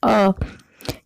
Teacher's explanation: जब हम अ का उच्चारण करते हैं तो हमारी जो जीभ की स्थिति होती है वो बीच में सक्रिय रहती है, वो हमारी जीभ बीच में आ जाती है अ। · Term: मध्य स्वर